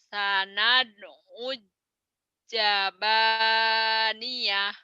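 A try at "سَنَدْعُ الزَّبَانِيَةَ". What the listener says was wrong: Zai-nya kurang rapuh ya. Kurang gurih gitu loh Z-nya tuh. New Zealand pizza. Jadi masih keras. zaba zaba zaitun zainab zamzam zai zai.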